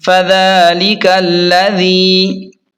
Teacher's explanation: ذال کو نرم پڑھیں اور یا مدہ کو تھوڑا سا کھینچ کر پڑھیں